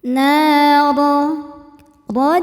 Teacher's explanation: do dibaca secara tafkhim karena berharakat di atas yaitu harakat fathah